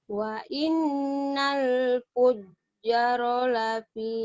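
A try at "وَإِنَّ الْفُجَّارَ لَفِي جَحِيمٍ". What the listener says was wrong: Jangan panjang sekali satu alif. Wa innal fujjara lafi jahim.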